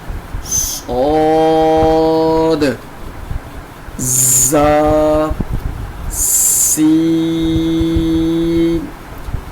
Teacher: زبان کی نوک اور دونوں دانتوں کے اندرونی کنارے سے